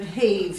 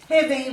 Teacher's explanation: heavy comes from the word heave, so we're changing that long E sound to a short et sound